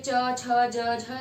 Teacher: Next आता है palatal, जिन ध्वनियों के उच्चारण में जीभ का बीच का हिस्सा ऊपर के तालू को टच करता है या स्पर्श करता है और ध्वनि उच्चारित होती है, च, छ, ज, झ।